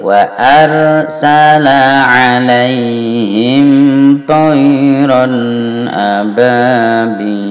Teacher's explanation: Wa arsala, ini juga ra tidak boleh mantul.